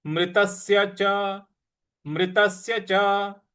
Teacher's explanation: त के बाद जो आधा स है उस पर हमको आघात देना है